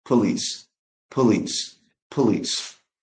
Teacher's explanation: if you know about sound schwa, that first syllable with O becomes unstressed. So it's not po, it's p.